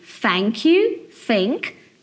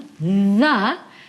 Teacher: o TH, na verdade, tem 2 sons, que é o th, como em thank you, think, e o the, que é vozeado